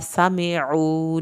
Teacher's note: سین کو سیٹی کی آواز کے ساتھ پڑھیں. سمعوا، عین کو حلق سے ادا کرنا ہے، واو ساکن کو کھینچ کے پڑھنا ہے.